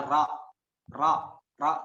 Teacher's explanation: jadi ditebalkan suaranya dan lidahnya diangkat keatas